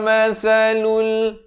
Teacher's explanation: sa di hujung lidah